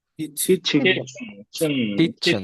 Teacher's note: চেনটাতে শোয়া সাউন্ড আছে, এটা হালকা করে দ্রুত হবে আর কি।